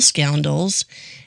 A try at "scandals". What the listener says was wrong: It sounded like you were going to say scandals and scoundrels at the same time. Because you said scoundrels.